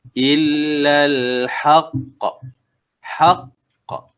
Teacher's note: Haq, tekan dulu, haq, kemudian lepaskan suara, dia bunyi qalqalah. Dia ada lantunan selepas tu. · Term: qalqalah kubra